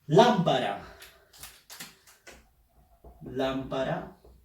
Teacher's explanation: Fuerza de voz en lam. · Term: palabra esdrújula